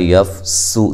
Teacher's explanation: سین کو باریک سیٹی سے اور لمبا نہیں کرنا سین کو، اور میم پہ جو مد ہے یہ مد واجب ہے، ٹھیک ہے۔